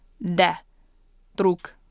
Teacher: But try to listen closely. I'm not actually saying D where I put the tip of my tongue on my alveolar ridge, but I'm actually putting it a little closer to my teeth.